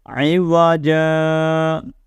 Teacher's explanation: یہ دو زبر کی تنوین جو ہے نا، یہ جب آخر میں آتی ہے، یعنی یہاں پر ہم نے سٹاپ کرنا ہوتا ہے تو اس تنوین کو الف مدہ سے بدلتے ہیں